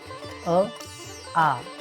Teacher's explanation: कंठ्य अ आ गळ्याच्या मुळातून · आ याचा उच्चार गळ्यातून होतो, ओठांशी संबंध नाही. आ म्हणताना गळ्याला किंवा कंठाला हात लावून पहा, त्या ठिकाणी कंपन जाणवेल, म्हणून आपलं उत्तर आहे कंठ.